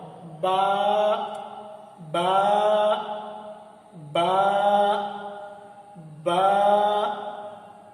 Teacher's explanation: एक वो हिस्सा जो बाहर का हिस्सा होता है उसे खुश्की वाला हिस्सा कहते हैं, एक अंदर वाला हिस्सा होता है जिसे तरी वाला हिस्सा कहते हैं। दोनों होठों के जब आपस में मिलाएंगे तरी वाला हिस्सा तो आराम से बा अदा होगा।